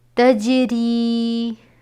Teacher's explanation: یہاں پہ ہم نے جیم کو زیادہ شو کیا ہے، یعنی جیم حروف قلقلہ میں سے ہے، اس لیے صرف جیم کو ادا کرتے وقت آواز میں جنبش سی ہونی چاہیے